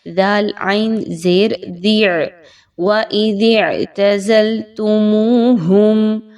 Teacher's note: دا کو آپ نے عین کے ساتھ ملانا ہے